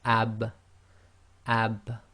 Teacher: you can feel the wet portion of your lips come together